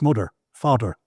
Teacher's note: And in the Irish scale, you don't put your tongue in in between your teeth like we do with mother, brother, and through. The tongue stays behind the teeth. So the hard th ends up a duh.